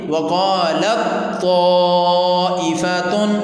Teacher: جب ہم نے تا کا طا میں ادغام کیا ہے تو تا ختم ہوگی، طا رہ گئی، تو پھر ہم اس کو پڑھیں گے وقالت طائفۃ۔